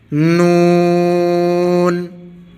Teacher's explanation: نون کو پڑھتے وقت زبان کی نوک اوپر والے سامنے کے دانتوں کی جڑ میں لگائیں گے جیسے لام کو پڑھتے وقت لگائی تھی، اور آواز کو ہلکا سا ناک میں لے کے جائیں گے، تب نون کی ادائیگی درست ہوگی، نون۔